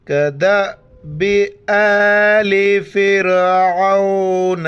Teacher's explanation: دال کو امزہ کے ساتھ ملانا ہے اور جھٹکے کے ساتھ پڑھنا ہے۔ امزہ کے اوپر کڑا زبر ایک الف کی مقدار کھینچنا ہے۔ الف کے اوپر زبر زیر پیش ہو یا جزم ہو تو وہ امزہ پڑھا جاتا ہے، الف نہیں پڑھا جاتا ہے۔